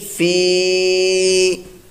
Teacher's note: یا ساکن سے پہلے زیر ہو تو یا مدہ ایک الف دو حرکات کے برابر اس کو لمبا کر کے کھینچ کر دراز کر کے ہم نے پڑھنا ہے